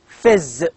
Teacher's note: It is a voiced sound. Z. You can feel the vibration.